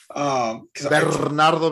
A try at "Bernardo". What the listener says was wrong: You have to roll your R's.